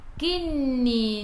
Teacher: nun ada sabdu, tekan ke dalam nun dan dengung 2 harakat. Wajibul gunnah.